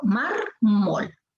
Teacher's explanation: La fuerza de voz está en mar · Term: palabra grave